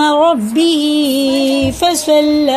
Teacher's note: یہ را بھی پر ہے، موٹا کر کے پڑھیں گے، تو پر کے معنی ہوتی ہے منہ بھر کے پڑھنا